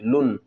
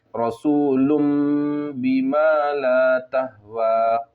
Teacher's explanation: آخر میں جو نون کی آواز ہے اس کو میم سے بدل دیں گے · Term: اقلاب